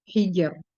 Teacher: huruf ro ini makhrajnya yaitu di ujung lidah, sedikit punggung lidah bersentuhan dengan gusi atas